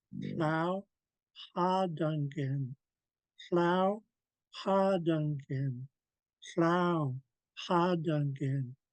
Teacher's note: We're blowing air, or we're blowing a raspy H sound from the back of the throat with lots of air.